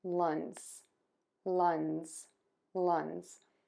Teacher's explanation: the tip of your tongue is still touching the back of your top front teeth, but instead of the air puffing out of your mouth, it's going to move out of your nose, and then you're going to pull your tongue down away from your teeth.